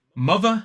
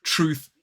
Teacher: mother has the voiced sound, truth, the unvoiced sound